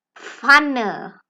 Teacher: Then we have the double consonants P and F coming together, but P and F are pronounced in one sound, pf.